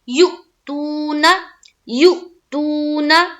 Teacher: یو میں بھی حمزہ ساکینہ کا جھٹکا ہوگا، حمزہ ساکین ہے نا، اور یا کو جب حمزہ سے ملائیں گے تو کریں گے یؤتون، تو پہلا جو ہے اس میں تو جھٹکا کریں گے اور دوسرا جو ہے اس میں واو مدہ کرنا ہے اور نون کو زبر کی حرکت کے ساتھ پڑھیں گے، یؤتون، یؤتون۔